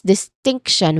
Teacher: distinction, which has three syllables, but you stress here on the second syllable · So we say as distinction with a clear stress on the middle syllable.